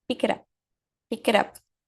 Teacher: Consoante vai se conectar com som de vogal e consoante vai se conectar com som de vogal novamente.